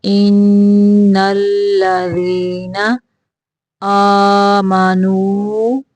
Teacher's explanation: ان پہ نون مشدد کا غنہ ہوگا